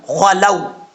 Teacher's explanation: یہ واو لین ہے، اس کو لمبا نہیں کریں گے